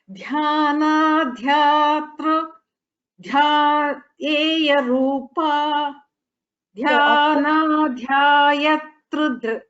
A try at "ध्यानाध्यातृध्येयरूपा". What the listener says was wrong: See, after dhyana there is no dirgha there. So it is not dhyana. It is dhyana.